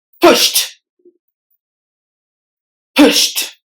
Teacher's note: the letter e is silent and the D is replaced with the T sound